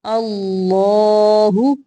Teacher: اللہ کا لام موٹا پڑھیں گے۔